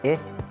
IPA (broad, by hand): ɪ